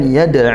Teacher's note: dal sukun dipantulkan qalqalah sugro